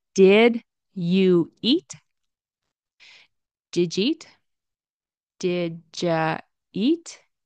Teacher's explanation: the D and the Y turn into J